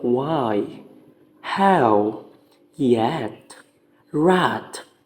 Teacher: there is no contact between the articulators when these sounds are produced so in simple words approxim are produced with our articulators the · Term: approximans